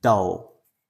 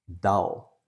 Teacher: The dark L is a completely different position. The dark L, we actually push our tongue forwards instead of up, and we put it where our teeth meet. That is not behind the teeth, it's actually in between the teeth.